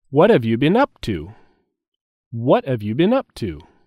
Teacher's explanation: is a stress on what what have you been up to have you been is said together and there is a stress on up